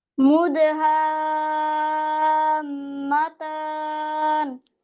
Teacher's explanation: সাদ্দা আসছে। সো সাদ্দা হলে এটাকে 6 হরকত পরিমাণ টানবেন, মানে 6 কাউন্টস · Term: মাদ